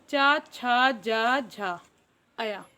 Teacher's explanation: चा से लेकर अया तक बोले जाने वाले व्यंजनों का उच्चारण तालु से होता है